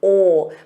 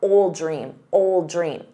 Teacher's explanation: So drop that D, ol, but then attach it to the noun, old dream